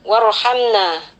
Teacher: ro sukun yang sebelumnya hurufnya berharakat fathah, maka ro sukun di sini dibaca tebal ya, atau tafkhim